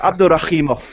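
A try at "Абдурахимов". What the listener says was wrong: Oh, you got to do the ha in there. It's a K with a ha mov.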